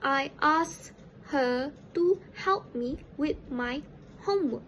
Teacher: The k sound in the word asked was omitted, whereby it became us instead of asked. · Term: elision